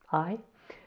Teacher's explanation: we've got an 'a' and an 'i', and they kind of glide together to make the diphthong 'ai'